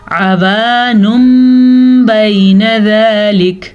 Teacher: یہ آپ کو میم نظر آ رہا ہے چھوٹا سا، پھر تنوین کے بجائے نون تنوین کے بجائے میم پڑھا جاتا ہے. ہم اس کو پڑھیں گے عوانم بین ذالک. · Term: اقلاب